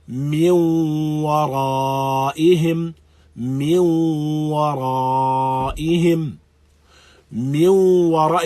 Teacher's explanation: If you listen to min wara, you hear the gunna, and you hear something of the sound of noon. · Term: idghamun bi ghunna naqis